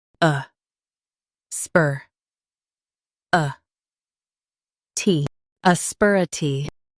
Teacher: Stress sper and keep uh-tee light.